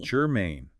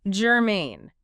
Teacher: 2 syllables, stress on the second.